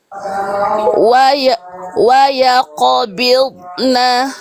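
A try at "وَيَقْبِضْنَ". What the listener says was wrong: Nah, yang ini putus. Bunyinya nggak solid, nggak kuat. Wa yaqbid. Wa yaqbidna.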